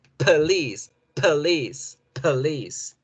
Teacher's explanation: en este caso, la schwa tomó la posición de la letra O.